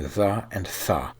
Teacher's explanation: Instead of stopping the airflow for a moment, we're only squeezing it, so at least some air is scraping through a narrow opening the whole time, which is why the name of this type of articulation is related to the word friction. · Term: fricative